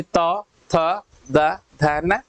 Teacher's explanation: अब त, थ, द, न में क्या हो रहा है, हमारी जो जीभ है ये छू रही किसको, दांत को।